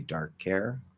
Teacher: you can say dark hair with no H